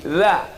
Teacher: Letakkan ujung lidah di ujung gigi.